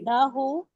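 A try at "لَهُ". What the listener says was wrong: ला को लंबा नहीं करना, अगर इसको लाहू करेंगे ना तो वो लाम अलिफ ला वाला हो जाएगा। आपने कहना है लहू।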